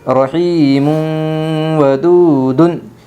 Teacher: دو، ودو دال 2 پیش دن، ودودن ادغام مع الغنہ ہوگا دو پیش تنوین کے بعد یمن کے 4 حرفوں میں سے واو آئی ہے، اس لیے دو پیش تنوین کو غنہ کے ساتھ ملا کر پڑھے گی